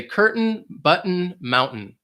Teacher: You don't really hear that T sound · sometimes American English will just say mountain and you almost drop that T